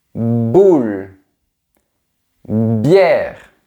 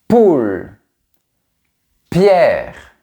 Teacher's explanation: Pour les deux sons, il y a une explosion au niveau de mes lèvres. Mais pour B, ça vibre et pour P, ça ne vibre pas.